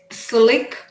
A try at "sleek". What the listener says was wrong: E. Yeah, get the E out of your throat. You can keep the E in the back of your throat for slick, but not for sleek.